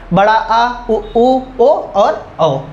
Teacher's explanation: पश्च स्वर हमने देखा, जो जीभ के पिछले हिस्से से बोले जाते हैं